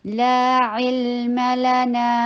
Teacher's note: لا علم لنا، لا to counts long. عین کے نیچے کسرہ، ای کی ساؤنڈ عین کو حلق سے ادا کرنا ہے اور لام کے اوپر توسط کیجیے.